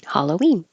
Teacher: the stress is on we